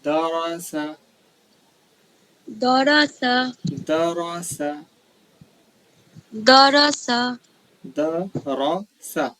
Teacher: را کو پور پڑھیں گے، موٹا